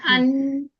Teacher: मीम में और नून में फितरी गुन्ना होता है